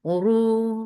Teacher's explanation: ra is heavy for dhamma, circle lips, make it 2 counts long